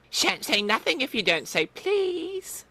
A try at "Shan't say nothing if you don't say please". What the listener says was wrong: Oh, sing-song. Let's try that again.